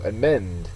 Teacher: So amend is a verb. Second syllable is accented.